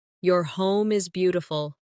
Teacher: Stress beautiful to make the compliment sound genuine. Another friendly phrase.